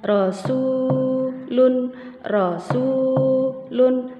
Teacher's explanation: satu Alif panjangnya atau dua harokat dua ketukan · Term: Mad Thobi'i